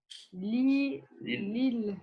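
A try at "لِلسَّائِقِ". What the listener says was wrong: on prononce pas le lam du deuxième, du alif lam, parce que c'est une lettre shamsiya. Donc on dira lis-sa'iqi.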